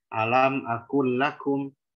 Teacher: Kaf itu punya hams, dia istifal. Sementara qaf itu dia jahar, tapi dia isti'la. Jangan sampai qafnya jadi mengarah kepada kaf.